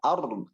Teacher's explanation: Kemudian lagi ada huruf yang harusnya ditebalkan ro wal ard ya, getaran ro-nya jangan sampai hilang. Nah, getaran dalam huruf ro itu ada sifat namanya takrir. Kalau kita hilang sifatnya berarti kurang sempurna.